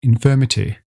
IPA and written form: infɜːmɪtɪ (infirmity)